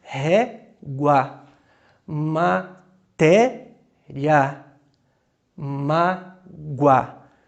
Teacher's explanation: Esse O tem som de U, é como se disséssemos mágoa. Então, semivogal mais vogal, ditongo crescente.